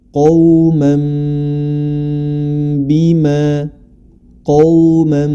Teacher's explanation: hukumnya adalah ketika nun sukun atau tanwin bertemu dengan huruf ba cara membacanya dirubah menjadi mim dan harus disertai dengan gunah